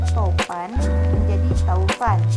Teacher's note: Perubahan ini terjadi pada bunyi vokal tunggal O ke vokal rangkap AU, tetapi tetap dalam pengucapan satu bunyi puncak.